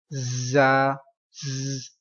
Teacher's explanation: These letters are pronounced with whistle, like high sound.